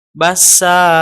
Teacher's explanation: ada hentakan nafas di akhirnya, tidak boleh. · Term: al-lahnul khafi